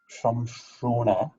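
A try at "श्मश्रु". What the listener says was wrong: Not Sham, Shma.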